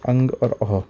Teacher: अब आता है अयोगवाह स्वर। यह अनुस्वार जिसका उच्चारण केवल नाक से होता है। जैसे अंग और अ इसका उच्चारण जो है नाक से होता है।